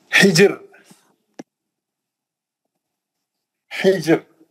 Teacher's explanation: ये रा साकिन है, ये जीम साकिन है, जीम पे खलखला भी होगा, रा पतली पड़ जाएगी क्योंकि हा पे जेर है ना।